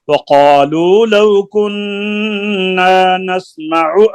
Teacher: आइन को लंबा नहीं करें वक़ालू लौ कुन्ना नस्मअु औ नस्मअु आइन की पेश को लंबा नहीं करें जी